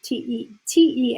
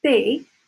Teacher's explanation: in Spanish to make the T in the D sound the tongue actually hits the back of the teeth